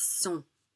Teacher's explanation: It's sont. We don't pronounce the final T. And N's and M's commonly make the vowel in front of it nasalized.